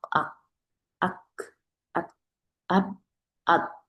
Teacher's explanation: 마크라지가 막혀요, 완전히. 소리가 더 이상 낼 수가 없어요. 그래서 이게 함자 같은 경우 우리가 수군 주면은 딸꾹질 소리. · 이게 다 한 번 발음하면은 그 다음 발음이 날 수가 없어요. 완전히 막힙니다. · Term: 쉽다